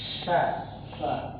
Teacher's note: huruf syin itu dia ada hembusan udaranya